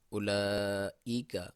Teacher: لام کے اوپر مد ہے، مد واجب کہتے ہیں، اور اس کو بھی آپ 2 سے 5 الف یا سیکنڈ تک لمبا کر سکتے ہیں۔ کچھ کتابوں میں 2 سے 4 تک بھی کہا گیا ہے۔